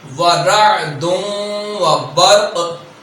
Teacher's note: قاف میں ہم جنبش پیدا کریں گے